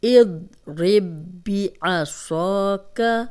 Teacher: یہ صاد موٹا حرف ہے اور الف مدہ بھی ہے، خالی الف پیچھے زبر 2 حرکات لمبا کریں گے